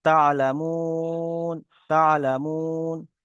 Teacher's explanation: হুরুফে মাদ্দার পরে থেমেছি, তাই একে মাদ্দে আরজি ওয়াকফি বলে, একে 3 থেকে 4 আলিফ পরিমাণ টান দিয়ে পড়তে হবে।